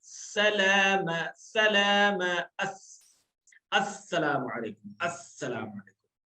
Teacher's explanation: सीन में सफीर ज्यादा रहेगी, सीटी की आवाज सीन में क्या ज्यादा रहेगी